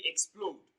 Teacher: the stress comes on the second syllable